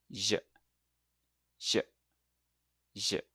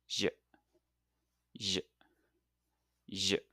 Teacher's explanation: think of it like adding a little buzz to the ch sound. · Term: J sound